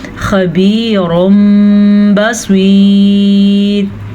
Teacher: تنوین کے بعد با آیا ہے، تو اس تنوین کو ہم میم میں بدل دیں گے، اسے ہم پڑھیں گے خبیرم بصیر، ٹھیک ہے، اس کو کہتے ہیں اقلاب۔